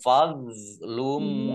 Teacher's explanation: dok sukun bukan kolkolah, jangan dipantulkan,